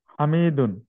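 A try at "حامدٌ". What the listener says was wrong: একটু উচ্চারণটাকে শুদ্ধ করে নেই, হাতে টান হবে, হ্যাঁ, বলেন হামিদুন।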